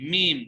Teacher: میم ادا ہوتا ہے دونوں ہونٹوں کے خشکی والے حصے سے · میم ہے دونوں ہونٹوں کا خشکی والا حصہ، یعنی یوں سمجھیں کہ میم کی ادائیگی میں تھوڑا سا آواز میں ہونٹوں میں تھوڑی سختی آتی ہے میم، تو اس لیے ہم کہتے ہیں کہ یہ جو میم ہے یہ ہونٹوں کے خشکی والے حصے سے ادا ہوتی ہے.